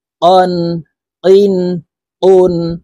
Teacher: এই কাফ হরফ জিহ্বার গোড়া থেকে একটু আগে বাড়াইয়া তার বরাবর উপরের তালের সঙ্গে লাগাইয়া উচ্চারণ করতে হবে। কাফ দুই জবর কান, কাফ দুই জের কিন, কাফ দুই পেশ কুন, কান, কিন, কুন।